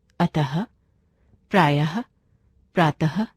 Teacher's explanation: इसका उच्चारण आधे ह के जैसा होता है। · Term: विसर्ग